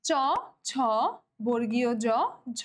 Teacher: তালব্য মানে বুঝতে পারতেছি যে শক্ত তালুর এখানে ইনভলভমেন্ট অবশ্যই থাকবে। তাহলে জিভের ডগা একটু প্রসারিত হয়ে শক্ত তালুর কাছে গিয়ে বায়ুপথে বাধা সৃষ্টি করে, তারাই হচ্ছে আমাদের তালব্য ব্যঞ্জন।